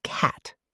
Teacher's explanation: The short A in cat requires your mouth to be wider and your tongue is lower and flatter. Think of a slight smile.